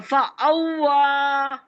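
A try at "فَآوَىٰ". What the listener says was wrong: یہ کیا پڑھا آپ نے فعولا پڑھا آپ نے اس کو ارے حمزہ کھڑا زبر کیا ہوتا ہے واو کھڑا زبر فآوا ہے ٹھیک ہے فآوا پھر او ہوتی ہے آوا بھی پڑھا آپ نے ہجے بھی کی آ اور وا آ وا فآوا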